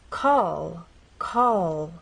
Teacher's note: in this final position we're going to keep keep the tip of our tongue pressed against the bump